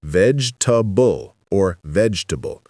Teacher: The correct pronunciation is 3 syllables, vegetable or vegetable. The middle E disappears completely.